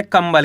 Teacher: यहाँ पे आपको आधा माँ पढ़ना है